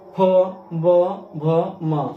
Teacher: इसके बाद पवर्ग है, जिनको बोलने में दोनों ओष्ठ सटते हैं। जिन वर्णों को उच्चारण करने में दोनों ओष्ठ सट जाते हैं उसे हम ओष्ठीय वर्ण कहते हैं, अर्थात इनका उच्चारण स्थान ओष्ठ होता है।